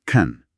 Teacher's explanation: en contexto can afirmativo suele ser una palabra funcional débil. Se pronuncia can con sha muy rápido y suave.